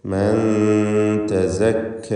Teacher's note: മണിക്കലിൽ തർക്കീഖാണ്, ഇഖ്ഫ മുറഖഖ് ആണ്, കാരണം ത ആണ് ശേഷമുള്ളത്